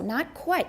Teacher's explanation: Not is stressed because it's a negative.